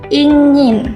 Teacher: itu N-nya agak berbeda karena itu eng ya